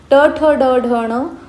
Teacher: मृधा या मुखातून मृधा या भागातून उच्चारले जातात म्हणून आपण त्यांना काय म्हणतो मृधन्य असे म्हणतो